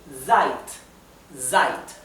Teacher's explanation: la s en alemán cuando está al comienzo de la oración y cuando está entre dos vocales y y es una s sola se pronuncia como un zumbido